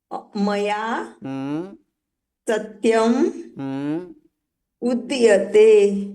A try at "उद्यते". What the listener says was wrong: उद्यते, उदयते नहीं, उद्यते। द और य साथ में, उद्यते।